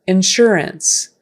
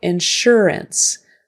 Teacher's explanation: That S is going to sound like an SH, so insurance.